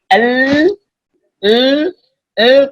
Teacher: suara yang keluar itu dari tepi kedua tepi lidah